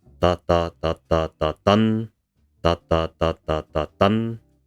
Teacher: it has 5 lights and a heavy. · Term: Alexandrine